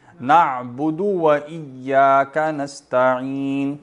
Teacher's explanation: دال لمبا نہیں ہوگا کیونکہ دال پر ایک پیش ہے، واو نہیں ہے نا. نعبدو پڑھ دیں گے تو کیا ہوگا، آگے واو بھی آ جائے گی.